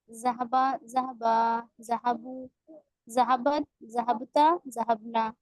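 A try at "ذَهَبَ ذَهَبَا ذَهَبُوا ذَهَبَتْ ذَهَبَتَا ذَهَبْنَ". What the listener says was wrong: एक गलती हो रही है, बा पर साकिन, बा को साकिन नहीं करेंगे, बा पर भी जबर है, बा साकिन होगा पांचवें सीगे से।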